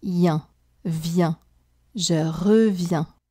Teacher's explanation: The three letters I, E, N together do the sound E plus the nasal sound un together.